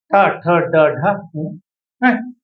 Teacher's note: इनका उच्चारण कहां से होता है मूर्धा से होता है